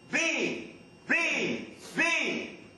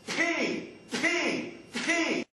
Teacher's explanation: But if we have B, we have to vibrate the vocal cords, and the air is stopped, and so it doesn't come out so much. All right? That's the difference. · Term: voiced